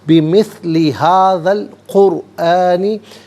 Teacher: قرآنی میں را ساکن ما قبل قاف پر پیش، را ساکن کو پر کر کے پڑھیں گے۔